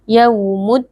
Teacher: alif lam bertemu dengan salah satu huruf Syamsiyah yaitu huruf dal Alif lamnya dileburkan ke dalam huruf Dal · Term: alif lam syamsiyah